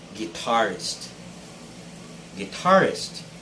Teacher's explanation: this word has the stress on the second syllable tar